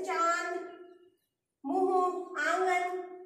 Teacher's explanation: इसका उच्चारण नाक और मुंह दोनों से होता है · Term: अनुनासिका